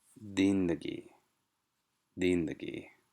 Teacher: the point was to have a heavy syllable on the first syllable and stress on the first syllable